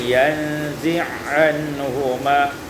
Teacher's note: Pada ayat 27, yanzi'u anhuma, idghamul ain fil ain, diidghamkan ain pada ain, yanzi'anhuma.